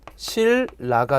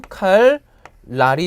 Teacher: 리을의 앞뒤로 붙는 니은은 다 리을로 변할 수밖에 없습니다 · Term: 유음화